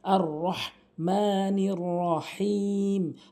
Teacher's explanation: হা হলকের মাঝখান থেকে